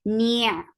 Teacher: Ni, for kasra, give e sound, attach to the ain, ain will get sifa of tawassut. And ain should be from your throat.